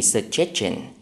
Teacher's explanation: tiếp vị ngữ sinh đứng sau một phụ âm S thì chúng ta sẽ đọc là trình